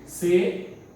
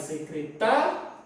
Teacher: o I, praticamente, você não pronuncia com força. Você não faz secretaria, você faz secretaria. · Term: semivogal